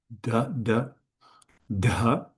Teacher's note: So here we have the aspirated D, aspirated da, da, da, and then the vowel re, dire.